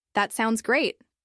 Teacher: "That sounds great," with a falling intonation could express calm approval